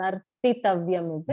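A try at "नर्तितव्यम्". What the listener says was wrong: Correct. You remember correctly.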